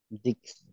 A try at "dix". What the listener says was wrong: No, dix. Igual que six, dix. Como si fuera una S. Dis. Dis. Dis.